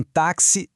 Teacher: E para complicar ainda mais, em táxi, ela se desdobra em dois sons, o KS